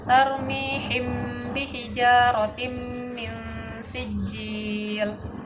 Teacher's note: makhraj dari huruf mim dan ba, pertemuan antara bibir atas dan bibir bawah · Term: ikhfa syafawi